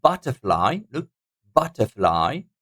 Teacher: it will be the first syllable taking the stress on butterfly